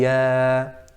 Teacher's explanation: this alif mad in ya and ayyuha, there has to be no ghunnah in it. So it should be ya.